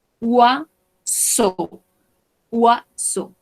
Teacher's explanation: cuando tenemos OI, vamos a pronunciarlo como UA